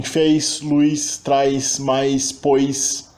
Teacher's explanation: a famosa ditongização de vogais átonas em sílabas finais com final sibilante